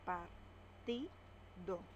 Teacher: La mayor fuerza de voz tiene la sílaba ti.